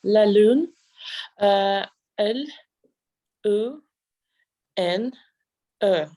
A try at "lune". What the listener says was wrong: Oui, L-U-N-E. Oui, U. It's kind of like your lips are in sort of like a circular kind of almost kissing position. U, but it is opened. So U, L-U-N-E. I'm sure you notice when people are speaking French, their lips are usually perky, like kind of, yeah. L-A-L-U-N-E.